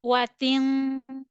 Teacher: we need to read ta double kasra tin with nasal sound